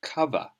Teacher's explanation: that's the shorter schwa sound at the end of cover